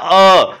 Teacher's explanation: तो देखिए, उच्च स्वर है वो आपके आता है अ, ठीक है ना। कंठ के अंतर्गत जो स्वर आता है वो आता है अ